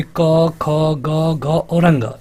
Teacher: जो क वर्ग में आता है, मतलब कि क, ख, ग, घ और अंग, इनको हम कहते हैं कंठ।